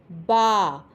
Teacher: دونوں ہونٹوں کے گیلے حصوں کو ملنے سے با ادا ہوتا ہے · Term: حروف شفویہ